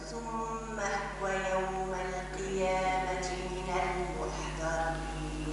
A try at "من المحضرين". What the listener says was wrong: فخم الضاد